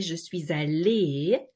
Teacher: Please note that the S followed by a vowel is linked and it's like the Z sound. So je suis allée if you're a woman.